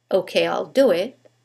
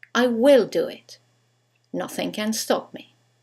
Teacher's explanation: when we use the contraction there is no stress on the contracted form